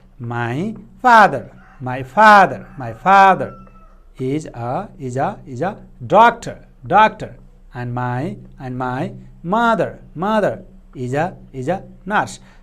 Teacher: So here father doctor and mother nurse, these words are stressed in natural English speaking.